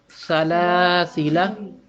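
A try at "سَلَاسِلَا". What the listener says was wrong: सीटी की आवाज कम आई है।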